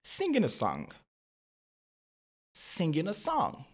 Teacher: On ne va pas prononcer le ga à la fin du mot